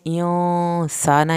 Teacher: इंसाना यहाँ पे गुन्ना हो रहा है, लेकिन नून की ज़बर नहीं खींचनी